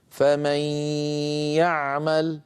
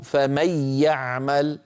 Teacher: لو شددنا الياء وأقول لو، لكان النطق فمن يعمل من غير غنة، ولصار الإدغام إدغاما كاملا. لكن العلماء لم يفعلوا ذلك، لأن إدغام النون في الياء إدغام ناقص لحفص ولورش ولقالون، لأغلب القراء إلا قليلا منهم. · كذلك الأمر بالنسبة للمثال الأخير الذي نراه أمامنا: فمن يعمل، النون مجردة من السكون والياء عليها فتحة من غير شدة. هذا دليل على بقاء الغنة من النون، يعني أن الإدغام ناقص. يكون النطق هكذا: فمن يعمل.